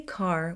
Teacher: If you say car with a clear R, your accent is considered rhotic. If you say ka with no R, it's non-rhotic.